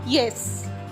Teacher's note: Yes means here it is a falling tone.